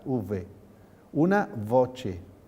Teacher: Luego la V, la U se ha convertido en V. V como lo pronuncian los italianos y los franceses. V, labio velar